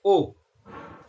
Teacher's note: आ उ मिलके ओ बनता है। तो कंठ से आ बोला जाता है, उ से ओष्ठ, तो क्या हो जाएगा? कंठोष्ठ।